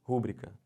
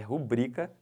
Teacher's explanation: Isso não é proparox, isso é paroxítona. É rubrica sempre, tá bom?